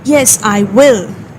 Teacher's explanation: you are stressing on the word will, which is another way of saying yes